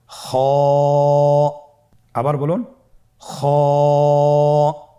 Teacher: খ হরাফটির মাখরাজ হলো কন্ঠনালীর শেষ ভাগ হতে উচ্চারণ করতে হয়।